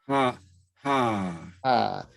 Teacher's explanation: do you feel the air coming out of your mouth? If you don't feel it, that means it's not the right pronunciation. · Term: aspirated H